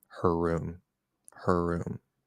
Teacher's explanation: you're probably going to just slightly extend that R